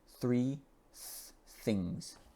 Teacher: It's the TH sound using only air.